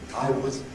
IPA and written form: wəz (was)